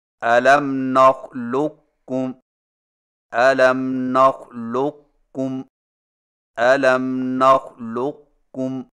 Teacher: قاف کے موٹا پن کو ظاہر کرنے کے فوراً بعد کاف بریک ادا کریں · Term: ادغام ناقص